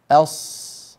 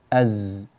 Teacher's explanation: الصفير هو هذا الصوت المصاحب للسين والصاد والزاي، صوت زائد يخرج من بين الأسنان، سببه ضيق المخرج، الأسنان تنغلق على بعضها البعض فالمتنفس يكون ضيقا، والهواء إذا خرج من منفس ضيق كان معه صوت زائد، هو هذا صوت الصفير.